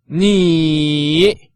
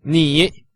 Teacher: With the third tone that goes from up to down and then up again